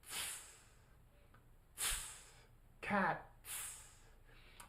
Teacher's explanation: it's aspirated so air comes out